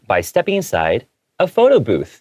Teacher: I had a little pause before a photo booth to kind of let the reader or the listener know this is the main topic of what we're talking about. · because the main subject is a photo booth, I chose to read it with an intonation that goes upwards